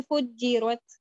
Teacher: تھوڑی سی نا تھ کی آواز آئی ہے، زیادہ تھ کی آواز نہیں ہے، یہ والی ساؤنڈ نہیں ہے، لیکن تھوڑی سی تھ کی آواز آتی ہے.